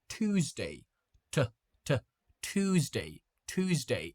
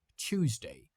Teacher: in American English we pronounce it like Tuesday. TT t Tuesday. Tuesday. But in British English, they pronounce it like Tuesday. Ch. A small difference, but but we do have it.